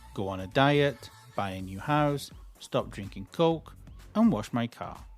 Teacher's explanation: If you notice, everything in the list rises. The intonation of everything in the list rises up until the last thing in the list. The last thing in in my list was wash my car.